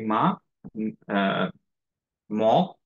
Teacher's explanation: শুধু লিপ দুইটা টাচ করে রাইট টাং কোন জায়গায় টাচ করে না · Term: লিপ লেটারস